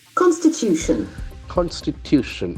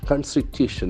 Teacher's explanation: accent falls on the third syllable